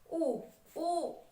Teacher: तो ओष्ठ माने ऊ, आपके लिप्स, आप देख रहे होंगे कि लिप्स का आप प्रयोग कर रहे हैं, ओष्ठ का प्रयोग कर रहे हैं, इसलिए हो गया ये ओष्ठ स्वर।